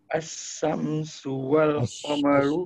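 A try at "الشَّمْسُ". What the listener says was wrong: As-samsu. Ash, dia ash bukan as ash. Shin ash. Asyamsu. Syamsu.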